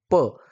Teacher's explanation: प वर्गाचे उच्चार स्थान कोणते आहे? उत्तर आहे औष्ठय. म्हणजे ओठांचा उपयोग होतो.